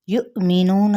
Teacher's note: حمزہ اور اوپر ساکن ہے تو یہاں پہ ہم جھٹکا دیں گے